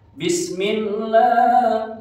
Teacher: Lafaz Allah itu ada kasroh bertemu lafaz Allah, namanya tarki. Tarki itu dibacanya tipis ya. Jadi bacanya millah.